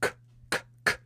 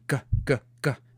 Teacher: But if you make that same sound while you're talking, g, g, g, now you've got this sound. So they're the same sound, just one is voiced and one is not.